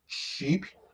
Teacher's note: Sh is a voiceless sound, and it is at the beginning of sheep, at the beginning of chalet, at the end of ash